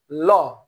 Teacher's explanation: ল, জিভের দুই পাশ দিয়ে বাতাস বের হয়ে যাচ্ছে। এই দুই পাশ দিয়ে বের হওয়ার কারণেই ল হলো পার্শ্বিক ধ্বনি।